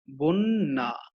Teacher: বয়ের সঙ্গে যে আদ্য অ আছে, এই আদ্য অ এর পরের ধ্বনিতে একটা জ ফলা আছে। আদ্য অ এর পরের ধ্বনিতে জ ফলার কারণে এই আদ্য অটি ওতে পরিণত হয়েছে · আমরা কিন্তু বন এই কথাটা বলে তারপরে কিন্তু একটু থেমে যাচ্ছে এবং এখানে কোনো অ নাই, এজন্য কিন্তু এখানে একটা হর্ষন্ত চিহ্ন অ হয়েছে।